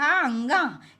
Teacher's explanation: उच्चारण स्थान नासिका होता है जैसे क ख ग घ अंग इसमें अंग का उच्चारण स्थान कंठ भी है और नासिका भी है